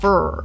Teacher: The middle of the tongue rises up in the mouth while the root of the tongue is pulling backwards and you might have some lip rounding as well. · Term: bunched R